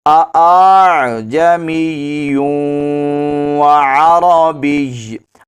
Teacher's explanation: یعنی حمزہ کو الف اور حمزہ کی درمیانی حالت میں ادا کرنا، اس کو کہتے ہیں تسہیل